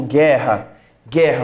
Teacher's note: Guerra, eu não falo o som do U. Ó, guerra ainda tem o RR ali, para matar a brincadeira. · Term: dígrafo